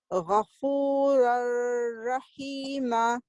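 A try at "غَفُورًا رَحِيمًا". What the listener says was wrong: So Ghafur Rahima, without holding the ra, without holding the sound for 2 counts. You will double up the ra shadda, but you will not hold it for 2 counts.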